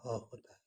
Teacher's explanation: जिन जिन व्यंजन ध्वनि के उच्चारण में मुख गुहा खुली रहती है और वायु बंद कंठ को खोलकर झटके से बाहर निकलती है। उसे काक्य कहते हैं। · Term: काकल्य व्यंजन